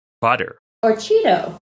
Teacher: The tap is used in place of T's or D's in the middle of words, like butter.